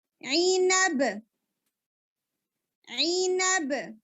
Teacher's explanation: stop کریں گے تو با ساکن ہو جائے گا اور با کے اوپر قلقلہ آ جائے گا